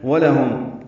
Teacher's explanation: میم ساکن کے بعد واو آنے کی وجہ سے اظہار شفوی ہے